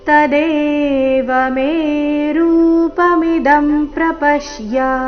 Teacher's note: ಪ್ರಪಶ್ಯ ಪ ಮೇಲೆ ಆಘಾತ